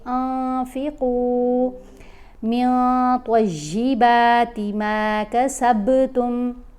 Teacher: اخفا کریں گے، یعنی نون کی آواز کو ناک میں چھپا کر پڑھیں گے